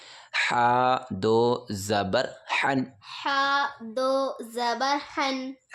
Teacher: اب یہ بڑا ہا بولتے ہیں اس کو، اس میں حلق سے آواز نکالیں گے اور یہاں سینے سے آواز نکلتی ہے اس والے ہا کی دھمک کے ساتھ، اور اس کو حلق سے نکالتے ہیں ایسے.